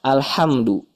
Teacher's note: Haknya hak nafas saja. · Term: wastul halki